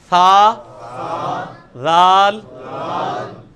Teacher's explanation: जुबान के किनारे को ऊपर के दांतों के किनारे के साथ लगाना है